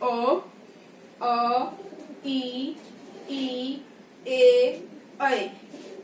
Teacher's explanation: वृत्ताकार में तो जो होठों की जो स्थिति थी वो बिल्कुल गोलाकार थी, जबकि अवृत्ताकार में जो होठों की स्थिति होती है वो हो जाती है चपटी इस आकार में, इसलिए इसको बोला जाता है अवृत्ताकार।